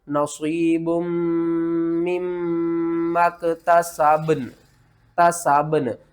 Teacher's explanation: یہاں پر جو ہے نا با، اس کے اوپر آپ نے قلقلہ کرنا ہے، اور نون با کے اوپر قلقلہ کر کے نون کے ساتھ ملانا ہے، ٹھیک ہے نا۔ بہت سے لوگ با کے اوپر بھی قلقلہ کرتے ہیں اور نون کو بھی لاتے ہیں، نون کو نہیں لانا، با کو ہلانا ہے